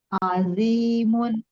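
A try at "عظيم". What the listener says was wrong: Kalau yang zi pakai dot, pangkal lidahnya, dinaikin sedikit Bu, biar tebal.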